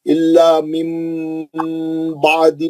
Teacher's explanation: لذین اوتوا الکتاب الا من بعد، من بعد میں نون ساکن کا اخلاب ہے، ہم نون کو نکال کے میم کا غنہ کریں گے